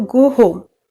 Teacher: गो होम बोले हैं तो थोड़ा ऊपर हो जा रहा है, पर गो पे हमारा थोड़ा कम टोन है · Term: राइजिंग फॉलिंग ट्यून